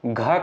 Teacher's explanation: जब आप घ का उच्चारण करते हैं तो ज्यादा वायु निकलती है। अगर यहीं पर ग होता तो ये आपका अल्पप्राण हो जाता है। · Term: महाप्राण